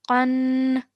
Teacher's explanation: tanween is pronounced straight away with no elongation of any letter. It's just you're pronouncing the nasal sound in your nose for about 2 seconds · your sound doesn't stretch, it goes straight into a nasal sound, which you hold in your nose for about 2 seconds